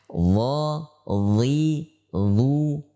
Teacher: pangkal lidah pada saat mengucapkan huruf dha diangkat. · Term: isti'la